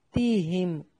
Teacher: मीम साकन का इजहार है, गुन्ना नहीं करना। हुम, हुम, इस तरह नहीं पढ़ना, बल्कि यहाँ पर इजहार करना है।